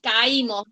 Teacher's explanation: vocal abierta átona, la A, y vocal cerrada tónica con la I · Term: hiato